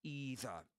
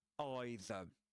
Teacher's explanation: with a long E sound at the beginning, rather than with a diphthong I